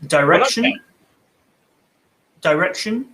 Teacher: value vowel i might pronounce it directly yeah so direction um in an american accent that i is almost not pronounced